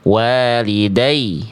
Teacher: Bunyi ya-nya ditekan sehingga nadanya lebih tinggi. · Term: Naber